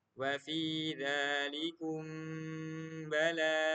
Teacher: Mim sukunnya kayak sembunyi dan kelihatan dikit gitu. Kedengaran mim sukun dikit gitu. Disebut ikhfa syafawi karena ikhfa ini terjadi pada makhraj bibir.